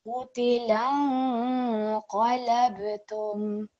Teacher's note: So that lang sound, that nasal sound really has to come through when you're joining the lam to the noon sakin. And again, we're going to hold that sound for 2 seconds.